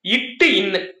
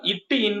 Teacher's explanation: நாவின் நுனி அன்னத்தின் நுனி